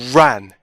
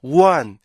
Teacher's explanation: 그것 때문에 생기는 현상이 뭐냐면은, 일반적으로 우리나라 사람들이 R 발음을 하잖아요. 그럼 자꾸만 W 발음처럼 나요. 그게 바로 혀가 안 올라가기 때문에 생기는 현상인데, run, run 이렇게 발음을 해야 되는데 run 이렇게 발음이 안 되고요, one 이렇게 발음이 돼요.